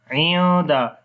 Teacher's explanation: After the noon sakin, the next is dal. So we make ikhfa here